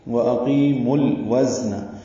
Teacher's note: اقیمو میں حمزہ اقصی حلق سے ادا کریں گے ، جلدی پڑھیں گے، قاف پر پڑھیں گے، قی یا مدہ · نہیں پڑھیں گے، وَأَقِيمُوا الْوَزْنَ، واو کو زا سے ملائیں گے، تیز سفید کی آواز سے زا ادا ہوگا · قی یا مدہ ہے، 2 حرکات لمبا کریں گے